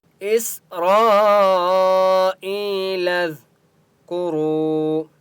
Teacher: واو مد ہے، را کو 1 الف کی مقدار کھینچ کر پڑھیں گے اور را کو پر پڑھیں گے